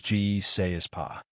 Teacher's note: The negative meaning is still carried by pas. What has been lost is the preverbal ne. In casual speech, ne is often the least prominent part of the frame, so speakers may not pronounce it. · What has been lost is the preverbal ne. In casual speech, ne is often the least prominent part of the frame, so speakers may not pronounce it. Your ear should not wait for two equally loud negative markers.